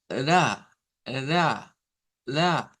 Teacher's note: porque es un movimiento donde se si este es el alvéolo topamos un momentito la lengua y luego baja ve como no es como las otras que se mantiene presionado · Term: tap o flap